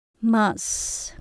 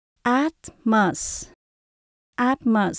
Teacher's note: âm số hai không nhấn mình đổi về chữ ơ